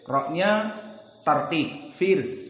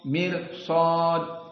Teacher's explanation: ra sakinah tetapi dia bukan tafkhim bahkan tarqiq jika sebelumnya kasroh